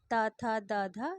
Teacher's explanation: यह त वर्ग जो है यह दंत के आधार पर उच्चारित होते हैं